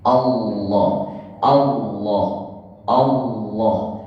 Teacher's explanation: Kalau kita baca tebal, Allahu, seakan-akan ini pangkal lidahnya, ini lidah. Jadi ketika membaca Allahu, secara tidak terasa ini pangkal lidah pasti lengket ke langit-langit bagian belakang. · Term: tafkhim, lafaz jalalah yang tebal